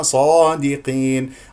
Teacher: الصاد مفتوح بعدها الف اذا مفخم مرتبه اولى